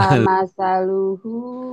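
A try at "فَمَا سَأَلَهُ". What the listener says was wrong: ketuker masih lalunya ya. Famasaluhu.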